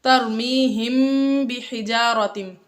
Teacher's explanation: میم ساکن کے بعد با آ گیا، اقلاب شفوی، میم ساکن کے بعد حرف با آ جائے تو اقلاب شفوی ہوتا ہے، یعنی میم ساکن میں غنہ کر کے پڑھتے ہیں